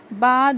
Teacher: دونوں ہونٹوں کے گیلے حصے سے با ادا ہوتا ہے